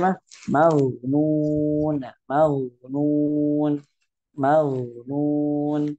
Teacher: Ya tazil tetap gitu. Dua bibir kita tetap monyong dari mim sampai ke nun.